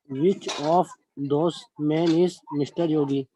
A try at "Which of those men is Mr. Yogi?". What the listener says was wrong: Answer is correct, but the pronunciation is those. TH, those. those. So which one of those men is Mr. Yogi? That's how you read it.